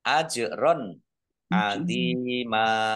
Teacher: Jim sukun. Bacaan kol-kolah. Dibaca memantul. Ditampakkan pantulannya.